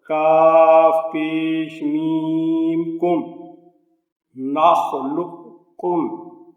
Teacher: نون زبر خا نخ، لام پیش قاف لق نخلق، کاف پیش میم کم نخلقکم۔ اب یہ جو ہے کاف یہ باریک پڑھا جائے گا، لیکن اس کی جو صفت مستعلیہ ہے وہ قائم رہے گی۔